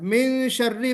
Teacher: मिन में गुन्ना, इख्फा वाला गुन्ना करना है।